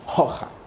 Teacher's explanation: esa H tuvo un sonido, era un sonido aspirado